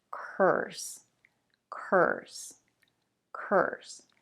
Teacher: remember that the star sound almost takes over the vowel